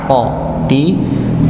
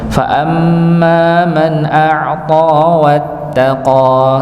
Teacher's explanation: A'ta bukan a'ta tapi a'ta ditebalkan dengan cara mengangkat pangkal lidah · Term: huruf ta